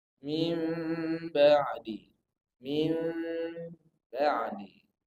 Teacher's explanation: Mengganti suara nun mati atau tanwin menjadi suara mim. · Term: iklab